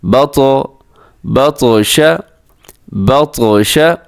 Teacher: با زبر عین با، دال پشدو بعدو، با زبر طا بط، با زبر طا بط۔ طا موٹا بھی ہے اور اس کے علاوہ اس کو قلقلہ بھی آپ نے کرنا ہے، یعنی اس کو ہلانا بھی ہے